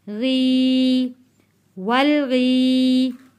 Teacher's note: या साकिन से पहले ज़ेर है, हरूफ मद्दा है, इसलिए हम इसको एक अलिफ के बराबर खींच कर पढ़ रहे हैं।